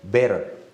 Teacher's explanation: So between two vowels, I can read it like D, better.